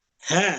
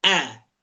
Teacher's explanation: Huruf H, pita suaranya jauh lebih lebar daripada huruf Hamzah.